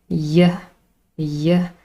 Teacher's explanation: I can feel how my tongue is elevated in the middle of my mouth Y and then of course the vocal chords vibrate because this · in the middle of my mouth Y and then of course the vocal chords vibrate because this is a voice sound and we also call this a voiced palatal approximant palatal because that's the place in the mouth where the tongue